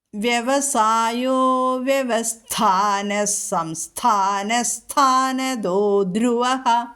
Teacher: ദോ എന്നുള്ളത് മൃദുവാണ് പിന്നെ ധ്രുവ ഘോഷമായിട്ട് ചൊല്ലുക